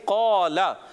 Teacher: लाम पर जबर लाम को खीचना नहीं